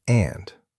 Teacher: Sometimes learners say anda, but it's just and, short, no extra sound at the end